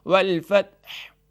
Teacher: والفتح میں آخری حرف حا ہے، تو اس کو جب وقف کریں گے تو حا کو بھی تھوڑا سا واضح کریں گے